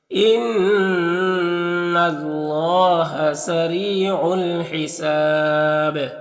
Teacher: अलिफ और अल्लाह का पहला लाम में कोई हरकत नहीं, इसको नहीं पढ़ना। रॉ के नीचे ज़ेर, रॉ को बारीक पढ़ेंगे, या मद्दा है एक, अलिफ को बराबर खींचेंगे। · यहाँ पर अलिफ लाम हुरूफ कमरी हा के शुरू में तो लाम को पढ़ेंगे, अलिफ को नहीं पढ़ेंगे। हिसाब में वक्फ़ करेंगे तो मद्दे आरिज़ वक्फ़ी होगा, और बा में कलकला होगा